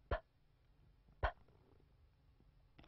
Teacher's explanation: 各位同学，大家好。这一讲我们来学习两个简单的辅音▁p▁和▁p。这个音在英语音标里面也有，很简单啊， 上下唇闭起来，然后一股气息从嘴里面发出来，冲破嘴唇 · 它比汉语拼音里面的▁p▁送气要强一些。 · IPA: [p]